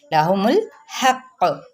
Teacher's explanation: الحق۔ اب یہاں پہ ہم نے جب وقف کریں گے تو قاف پہ کلکلا کر کے چھوڑیں گے